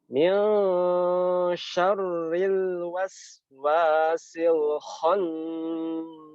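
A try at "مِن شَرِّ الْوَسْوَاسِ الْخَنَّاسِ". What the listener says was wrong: Bukan, tidak boleh ke hidung. Dia kalau huruf-huruf yang ke hidung itu khusus huruf-huruf yang tebal seperti huruf qaf, so, bo, to, wo itu baru ke hidung. Tetapi kalau huruf yang tipis selain ya yang tipis ya itu dibagi antara hidung sedikit sama mulut. Ini bacanya min syarri, bukan min syarri.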